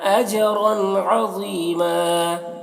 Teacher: مد منفصل ہے، اجرن جیم میں قلقلہ ہو رہا ہے اور رن کی تنوین میں اظہار ہو رہا ہے